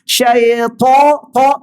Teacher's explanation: huruf ta yang berbaris di atas, lepasnya ada huruf alif, paling kuat tebal